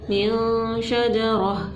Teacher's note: नाक के अंदर आवाज़ को छुपाना है, नून की आवाज़ को और ज़ाहिर नहीं करना है, ना ही तनवीन की आवाज़ को ज़ाहिर करना है, ना ही नून की आवाज़ को हमने क्या करना है, ज़ाहिर करना है, बल्कि छुपाना है।